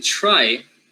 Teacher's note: so the R after T gets fricative, but it also gets devoiced